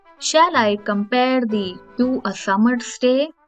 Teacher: it follows the pattern of unstressed stressed syllables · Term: pentameter, iambic pentameter